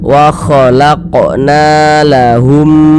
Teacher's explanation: Sehingga na dibaca panjang. Mad tabi'i panjang 2 harokat.